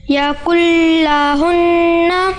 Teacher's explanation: لام کی تشدید ہے، اس کے اوپر آواز ٹکے گی